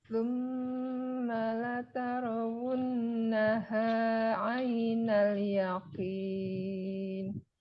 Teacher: Jadi yang ada tasdid huruf nun dan mim kalau bertasdid itu didengungkan ya cara bacanya.